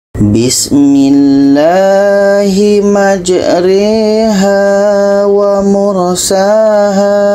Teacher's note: yang asalnya majraha dibaca menjadi majriha ini namanya bacaan imalah